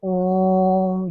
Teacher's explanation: ओम जब इसका उच्चारण करते हैं ना बच्चा तो उसमें तीन गुना समय लगता है और ओ के बगल में तीन हम लोग लिखते हैं। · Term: प्लुत स्वर